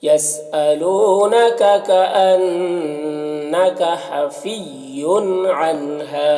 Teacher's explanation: عین حروف علقی میں سے تو اظہار حقیقی ہوگا